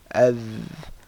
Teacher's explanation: So all these, the front portion of the tongue, okay, the tip of the tongue touches basically the sharp part of the top front two teeth